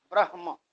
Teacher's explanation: ब्रह्म जब कहते हैं तो ब्र और ह के बाद में म आधा जैसे दिखाई देने लगता है, तो म पूरा है और ह आधा होता है। ब्रह्म, ह पहले आएगा उच्चारण, म बाद में आएगा